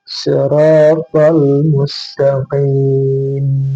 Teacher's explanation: Ihdinas siratal mustaqim, qim sama, ini adalah mad alif disukun, bisa 2 harakat, bisa 4 harakat, dan bisa 6 harakat. Dan karena ini diakhiri dengan mim yang disukun, berarti ada gunnah naqisah, ya. Siratal mustaqim, ada dengung yang ringan.